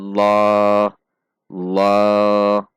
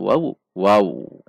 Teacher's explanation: cara membacanya tidak dengan membulatkan bibir namun dengan mengangkat pangkal lidah karena tafkhim sehingga tidak mungkin berbunyilah namun bunyinya loh loh karena lidah kita